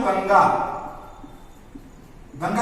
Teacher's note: क वर्ग का अनुनासिक व्यंजन अंग है ना